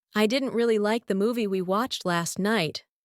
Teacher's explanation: What words did you hear most clearly? Most likely, you caught didn't, like, movie, watched, and night.